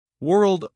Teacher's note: Texts, K, S, and T ending in sequence. World, R, L, and D, all in one smooth final cluster. Say each one slowly, exaggerating every consonant in the cluster, then speed up while trying to keep at least a light trace of every sound, rather than collapsing the whole ending into a single vague sound.